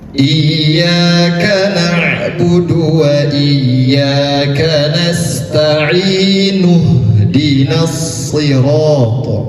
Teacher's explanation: Jadi di sini bukan hukumnya matarid lisukun, tetapi tetap mat tabi'i, panjangnya 2 harakat.